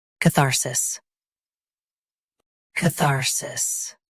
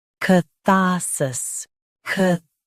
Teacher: US has thar. UK has shorter tha.